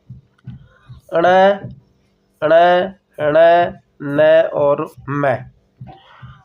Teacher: वे वर्ण जिनके उच्चारण में हवा का प्रमुख वेग नासिका से निकलता है किससे निकलता है नासिका से निकलता है इनकी संख्या पाच है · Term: नासिक्य व्यंजन